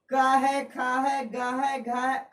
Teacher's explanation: इस सब का उच्चारण कंठ से होता है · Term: कंठे ध्वनिया